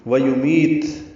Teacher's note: واو ہونٹوں کی نا تمام گلائی سے ادا کریں گے